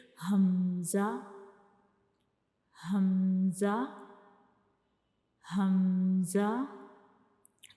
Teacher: तो हमज़ा का मखरिज क्या है, हमज़ा जो है ये भी एक हरूफे हल्की है, तो ये हमारे हलक के यानी गले के सबसे नीचे वाले हिस्से से अदा होता है